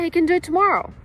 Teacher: if you have can, meaning he's able to do it, you don't stress it